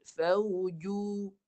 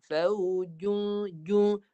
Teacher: Tapi kita Baiki ni agak susah sikit lah nak betulkan. Faujun, jim ni baris pertama tak boleh masuk hidung Baris pertama kat mulut. Fauju. Lepas ju baru hidung.